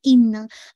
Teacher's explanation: اننا، آپ نے اس پہ غنہ کرنا ہے، موسٹ کمپلیٹ غنہ، مراتب الغنہ، رینکنگ آف غنہ کے حساب سے اس پہ موسٹ کمپلیٹ غنہ ہے. یہ آپ کو وائبریشن ساؤنڈ آپ کی نوز میں محسوس ہوگی